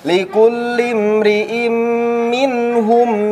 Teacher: nun mati di depannya ha jelas izhar, pembacaannya tidak didengungkan.